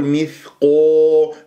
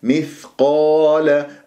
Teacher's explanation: مخرجه ضعيف يحتاج إلى جريان للصوت والنفس، مثقا، ولا أقول مثقو، لا تكور الشفاه في القاف المفتوحة بعدها ألف مفخمة مرتبة أولى